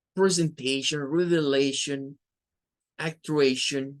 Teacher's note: la T-I-O-N nos apunta a un sonido como de una SH, como que fuera una SH, eso indica este símbolo, es una SH.